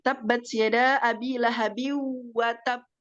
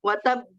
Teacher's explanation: Ditahan dulu karena di situ ada tasdid, kemudian baru dikolkolahkan. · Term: qalqalah kubro